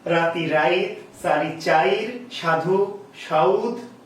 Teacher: পিছনে উচ্চারিত না হয়ে তারা কি করছে উচ্চারণটা আগে করে নিচ্ছে অর্থাৎ পরের ইকার বা উকার পরের থেকে একটু সামনে চলে আসছে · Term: অপিনিহিতি